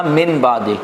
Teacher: نون کے بعد با کا تلفظ نہیں ہوتا، اس لیے تلفظ کرنے کے لیے ہم نے میم سے بدل دیا، اور وہاں پر چھوٹی سی میم بھی لکھی جاتی ہے، من بعدی، مم باخیلا غنہ بھی کریں گے۔